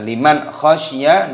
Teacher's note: nun sukun bertemu dengan kha, dibaca idhar halqi, dibaca jelas, tidak boleh berdengung. Jangan dibaca liman khasyiyah, tidak boleh.